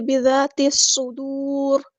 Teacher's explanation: لام یہاں پر لام شمسیہ ہے، اس کو ظاہر نہیں کرنا،